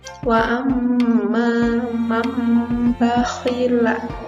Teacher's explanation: Di atasnya ada tanda mim kecilnya nih. Jadi kita membacanya itu nun matinya diganti dengan mim. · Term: iqlab